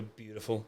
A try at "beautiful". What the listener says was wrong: Beautiful. You mute the T, whereas you emphasise the T. Beautiful.